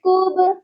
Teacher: با حروف قلقلہ ہے، اس پر قلقلہ لازمی ہوگا کیونکہ با ساکن ہے۔